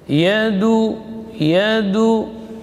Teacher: Dal huruf syiddah dan jahar. Ujung lidah di usul sanaya. Ya, pangkal gigi seri atas.